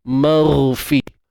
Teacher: Jadi nak tebalkan, nak wujudkan unsur tebal itu, maka apa yang kita kena buat? Angkat pangkal lidah. Dan makhraj bagi huruf ghain ni di hujung kerongkong kan. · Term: huruf tebal